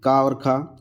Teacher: तो इसमें हमारी कंठ ध्वनियाँ जो हो जाएंगी वो हो जाएंगी ऑप्शन ए, जो का और खा है ये हमारा का वर्ग जो होता है वो कंठ ध्वनि वहाँ होती हैं। का वर्ग जो होता है वो पूरा हमारा कंठ से बोला जाता है।